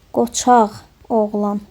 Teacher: sözün sonu q ilə bitirsə, özündən sonra sait gəlirsə, qğ əvəzləməsi baş verəcək. Qoçaq oğlan olacaq.